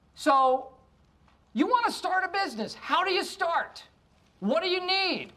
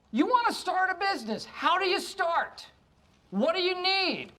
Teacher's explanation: Want to, which turns into wanna, how do you, which turns into howdya, and what do you, which turns into whaddya. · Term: phrasal reductions